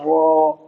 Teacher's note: یہ اس کے اندر P D F کے اندر بن بھی رہا ہے، یہاں پر دیکھیے زبان کی بیک سائڈ ٹچ ہو رہی ہے یہاں پر، ٹھیک ہے۔ اس زبان کی بیک سائڈ اوپر کے تالو سے ٹچ ہوگی، تب یہ را ادا ہوگا · زبان کی نوک کمر کی طرف اوپر کے تالو سے مل کر ادا ہوتا ہے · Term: را کا مخرج